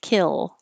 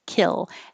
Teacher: When you're done with your kill, you you you hold your L sound longer, kill, so it can be heard, kill.